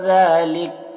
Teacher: ذالک ذال میں کھڑا زبر ہے، ایک الف کے برابر کھینچ کر پڑھیں گے